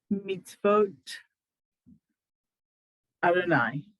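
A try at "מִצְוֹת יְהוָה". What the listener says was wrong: Perfect. Good.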